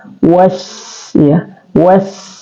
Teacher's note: dia adalah hamas, mengalir nafas